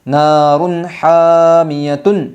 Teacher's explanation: 2 پیش تنوین کی آواز کو خوب ظاہر کر کے پڑھیں گے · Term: اظہار حلقی